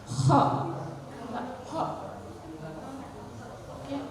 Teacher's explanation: Kho itu juga dari tenggorokan, harus ngorok. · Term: idhar halqi